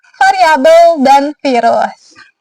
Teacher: dia ini bunyi bersuara. Jadi pita suara itu bergetar seperti pada kata variabel dan virus.